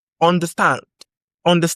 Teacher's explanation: With the stand going up. The stress is on stand.